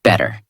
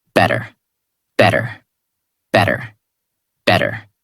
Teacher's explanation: In these words, the mouth does not stop strongly on the T. The tongue touches quickly and moves on. That is why it sounds softer.